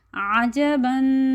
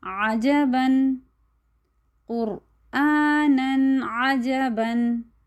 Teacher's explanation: پیچھے ہم نے تنوین کے بارے میں بھی پڑھا تھا کہ تنوین کو جب ہم ادا کرتے ہیں جیسے عجبن، تو ہم تنوین کی جو آواز ہے اس کو ناک میں نہیں لے کے جاتے، عجبن ایسے نہیں پڑھتے، بلکہ ہم اس کو پڑھتے ہیں عجبن، قرآنن عجبن۔ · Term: اظہار